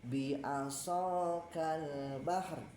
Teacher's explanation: Ada bunyi ro dengan sifat takrirnya ya. Berulang